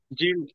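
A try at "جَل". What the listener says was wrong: ஜல் அல்ல, ஜா அல்ல, ஜெல் பணியணும்.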